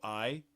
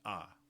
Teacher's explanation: So I is longer than ah, but it's shorter than two vowels by themselves. So it's like one and a half vowels longish if you want to think about it that way.